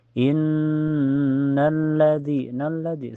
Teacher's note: Innalladzi nalladzi istilahnya ada hukum alif lam asyamsiyah karena alif lam ketemu huruf syamsiyah yaitu lam. Cara bacanya langsung masuk ke lam yang kedua ya. Jadi kalau ada lam bertasjid itu dianggap doble, dianggap dua.